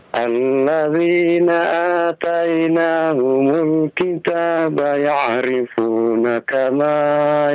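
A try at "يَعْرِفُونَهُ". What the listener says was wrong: Ya'rifunahu, ada hu itu ketinggalan, Pak. Konsentrasi ya, konsentrasi.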